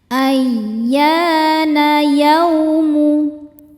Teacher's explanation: Yau ada harfulin sebab ada wau sukun sebelumnya baris fathah. Cara bacanya lembut atau lunak.